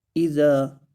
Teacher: ذال کو لمبا کریں گے اس لیے کہ الف مدہ ہو رہا ہے، اور ذال کو نرمی سے پڑھیں گے کیونکہ نرم حروف میں سے ہے۔